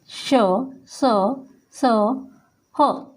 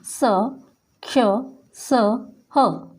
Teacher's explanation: ऊष्मा के साथ वायु बाहर निकल रही है, लेकिन मुंह का कोई भी भाग आपस में स्पर्श नहीं कर रहा है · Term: ऊष्म व्यंजन